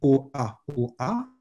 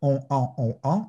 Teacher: O-A, O-A, et si vous faites on-an, on-an, là, vous devez sentir que de l'air passe dans votre nez et que ça vibre un peu. Bon, vous produisez des voyelles nasales.